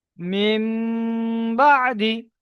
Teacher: নুন সাকিনের পরে বা এসেছে, তাই নুন সাকিনকে মিমের দ্বারাই পরিবর্তন করে একালি পরিমাণ গুন্না সহ পড়তে হবে। একে ইকলাব বলে।